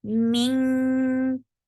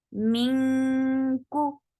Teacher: when you are making ikhfa for letter kaf, you create this ink sound. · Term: light ikhfa